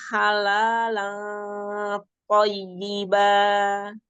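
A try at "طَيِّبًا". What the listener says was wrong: Y-nya panjang-panjang.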